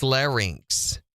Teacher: Your larynx. There's no extra N in there before that vowel.